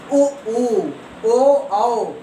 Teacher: हमारा मुंह चोंच की तरह आगे निकल जा रहा है और गोला हो जा रहा है · जिन वर्णों को बोलने से हमारा मुंह गोला हो जाए, वृत्ताकार हो जाए, उसे हम वृत्तमुखी कहते हैं